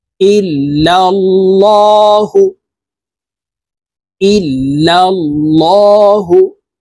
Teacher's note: আল্লাহ শব্দের আগের হরফে জবর আছে, এই কারণে এই লামকে ল অর্থাৎ মোটা করে পড়ব।